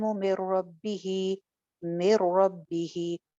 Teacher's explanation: یہاں پہ ادغام ہو رہا ہے، نون کی آواز بالکل ختم ہو رہی ہے